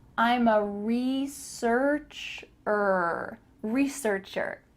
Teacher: make sure that the vowels in this word are the same er and then er again